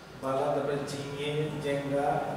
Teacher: অনেক ক্ষেত্রে মহাপ্রাণ ধ্বনিগুলো অল্পপ্রাণ ধ্বনিতে পরিবর্তিত হয়।